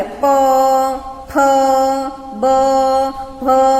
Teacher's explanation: જો આ વ્યંજન બોલીએ ત્યારે બંને હોઠ ભેગા થાય. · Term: ઓષ્ઠ્ય વ્યંજન